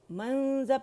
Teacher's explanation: منذ پہلے غنہ کر کے پھر ذال پہ نہیں جانا، رائٹ اوے جانا ہے